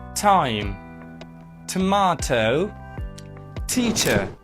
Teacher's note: T is a voiceless alveolar plosive